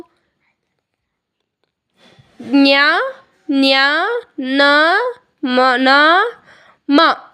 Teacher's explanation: ಅನುನಾಸಿಕ ಅಕ್ಷರಗಳು ಮೂಗಿನಿಂದ ಸಹಾಯದಿಂದ ಆ ಅಕ್ಷರಗಳು ಉಚ್ಚರಿಸುತ್ತವಲ್ಲ ಅದನ್ನು ಅನುನಾಸಿಕ ಅಕ್ಷರಗಳೆಂದು ಕರೀತಾರೆ.